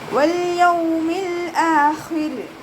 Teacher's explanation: വാവ് ഉച്ചരിക്കുമ്പോൾ ചുണ്ടുകളൊന്ന് വട്ടത്തിൽ പിടിച്ചു കൊടുക്കുക. ലാമിന് ഹാഫ് സുക്കൂന് കൊടുക്കാനായിട്ട് ശ്രദ്ധിക്കുക.